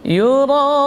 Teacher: Ra huruf takrir, maksimal getarannya 2. Yura, ada alif mad kemudian ketemu dengan hamzah menjadi mad wajib muttasil, panjang minimal 4 harakat, maksimal 5.